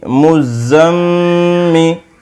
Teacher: میم پیش زا مز، زا زبر میم زم، مزم، میم زیر می، مزمی، میم کے اوپر تشدید ہے اس لیے ایک الف برابر غنہ ہوگا